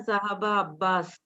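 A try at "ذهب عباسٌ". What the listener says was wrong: Abbasun. Abbasun, you are right. But for the sake of reading, we will be pronouncing the last letter sign also. Aina Zahaba Abbasun.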